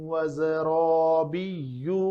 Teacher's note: را زبر کے ساتھ ہے، پر پڑھنی ہے تو یہ الف بھی پر پڑھا جائے گا